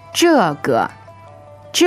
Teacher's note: fourth tone and neutral